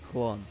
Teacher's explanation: Voiceless lateral fricative, as found in Welsh.